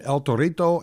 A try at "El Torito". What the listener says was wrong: But you suck at rolling R's.